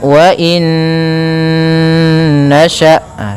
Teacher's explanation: dengan huruf nun maka hukum tajwidnya yaitu idgham bhunah cara membacanya masukkan Nun yang pertama kepada Nun kedua kemudian ditahan ghunahnya · masukkan nun yang pertama kepada nun kedua, kemudian ditahan gunnahnya, karena idgham itu memasukkan, bi gunnah disertai dengan gunnah. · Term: idgham bi gunnah